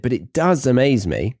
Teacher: We have does at the beginning to press that it really does amaze me.